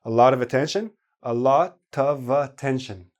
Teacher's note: A lot of attention, a lot of attention, all squeezed together. And the OV, the OF becomes AV,